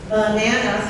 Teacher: 3 syllables, the second syllable is the stressed one, and that sound is ah. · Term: peak vowels